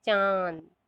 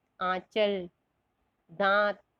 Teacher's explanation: चांद बोल रही हूँ तो मुंह से भी हवा निकल रही है और नाक से भी। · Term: अनुनासिक